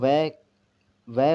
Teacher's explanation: दंत और ओष्ठ दोनों से उच्चारण इसका व का होता है। दंत प्लस ओष्ठ से उच्चारण इनका होता है।